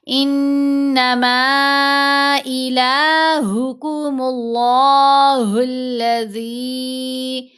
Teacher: لفظ اللہ کی لام کو یہاں موٹا پڑا جائے گا۔ لفظ اللہ کی لام کو موٹا پڑھتے ہیں جب اس لام سے پہلے والے حرف کے اوپر پیش ہو یا زبر ہو